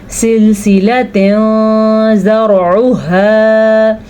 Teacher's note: اخفا کسی حد تک نون ساکن کی آواز چھپا لیتے ہیں اور غنہ تو ہوتا ہی ہے